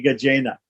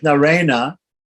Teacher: It's a cerebral N. Yeah? So the reason why it changes into a cerebral N here is because of the action of the R, because the R comes before it.